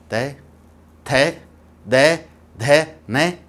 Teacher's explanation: जीभ दांत को छू रही है